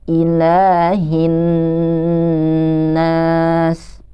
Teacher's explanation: Nun yang bertasydid ya Artinya kita harus menahan nya ketika membacanya